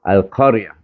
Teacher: Iaitu mati tar marbutah ni, mati dia bunyi iha. Bukan bunyi ta. Iyah bunyinya.